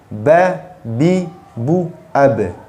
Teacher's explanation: ba disebut huruf karena dia memiliki makhraj, yaitu dua bibir